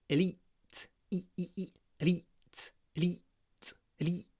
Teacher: Now here we have the E sound, but it's really short. It's clipped because it comes before an unvoiced T.